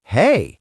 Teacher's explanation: if I use a rising tone, hey, it shows I'm happy.